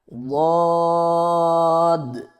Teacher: اگلا حرف ہمارے پاس ہے ضاد۔ زبان کے پچھلے حصے کو تالو کی طرف بلند کرتے ہوئے زبان کے موٹے کنارے کو اوپر والی داڑوں کی جڑ پر آہستہ آہستہ نرمی سے لگا کر خوب موٹی اور دراز آواز میں پڑھیں